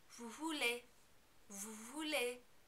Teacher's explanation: In the vous form, you also are not going to pronounce the S at the end of vous because it's not followed by a vowel sound.